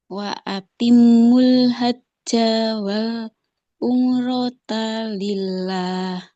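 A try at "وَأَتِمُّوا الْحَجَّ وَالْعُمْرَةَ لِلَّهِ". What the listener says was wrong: Nah, di hajja, jimnya nggak boleh panjang karena fathahnya nggak ada alif.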